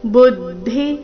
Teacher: ಬುದ್ಧಿ ಬು ಮೇಲೆ ಆಘಾತ